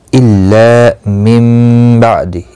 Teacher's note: इल्ला ला अलिफ मद्दा है, एक अलिफ की मिकदार के बराबर खींच कर पढ़ेंगे